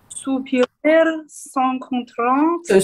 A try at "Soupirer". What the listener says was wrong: Soupirer without, sorry, I'll say it for you. Soupirer without an R.